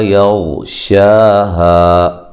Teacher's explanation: غین کو موٹا لیکن ہلانا نہیں ہے۔